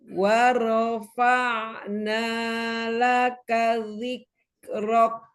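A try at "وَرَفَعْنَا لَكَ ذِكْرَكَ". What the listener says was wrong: Ya, kasih hams pada kaf. Dzikrok.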